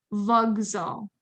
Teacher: It's not voxal because the Z is voiced. So the K becomes voiced as well.